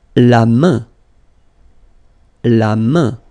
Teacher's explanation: it will give you the sound un, so it's really a nasal, it goes in your nose